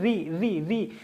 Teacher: मेरी जो जीभ है वो तालु पे ऊपर चिपक रही है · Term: मूर्धन्य